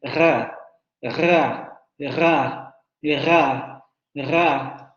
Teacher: La parte posterior de la lengua se va hacia la zona uvular. O sea, aquí prácticamente ya todo el sonido lo estamos sintiendo en la garganta. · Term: sonidos uvulares